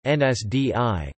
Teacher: Ends is written as nas. The vowel is included in the transliteration, but is not pronounced in the word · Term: dummy vowel